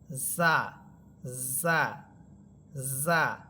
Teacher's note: আর সিফাত হচ্ছে জা এটা চিকন হরফ, জিম এটাও চিকন হরফ, কিন্তু জা এটা ঝিঝি পোকার মতো আওয়াজ হবে, সিনের মতো বা সদের মতো, কিন্তু জিম এটা ঝিঝি পোকার মতো আওয়াজ হবে না।